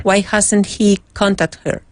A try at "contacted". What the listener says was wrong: Try again. You're missing one syllable. Try again.